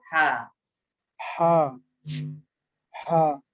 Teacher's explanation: হাটা গলার ভিতর থেকে হবে হা